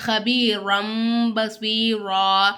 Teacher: அந்த தன்வீனையும் சரி இல்ல நுனே சாக்கினையும் சரி நம்ம என்ன செய்யணும் மீமா மாத்தி ஓதணும் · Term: எக்லாப்